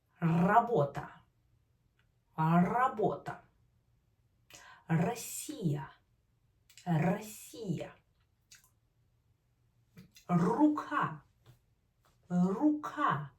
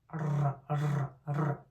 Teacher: place your tip of your tongue close to the roof of your mouth, right behind upper teeth. And let your tongue push air out and let your tongue vibrate. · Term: Rolled R